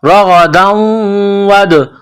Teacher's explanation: دال ساکن ہے تو یہاں پر قلقلہ کرنا ہے